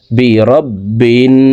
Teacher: হরকতের বামে নুনের উপরে তাসদি আছে এ কারণে এজওয়ালা বাটি তাসতিদলা নুনের সাথে তিন সেকেন্ড পরিমাণ গুন্নাহ করে পড়বো